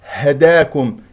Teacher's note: والهاء اخرجها من اقصى الحلق لا تخرجها من من الصدر